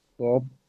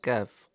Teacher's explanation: একটা হচ্ছে জিবার গোড়া থেকে আসবে কফ আরেকটা হচ্ছে জিহ্বার গোড়া থেকে একটু সামনে